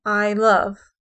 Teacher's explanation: an unstressed syllable followed by a stressed syllable so we see that here i love so i is unstressed · So I is unstressed, love is stressed. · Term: iambic, iamb